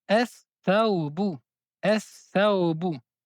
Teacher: Également, lorsque nous allons avoir le alif et le lam derrière la lettre sa, on ne prononce pas la lettre lam, mais on prononce deux fois la lettre sa. On dit es thawbu, es thawbu.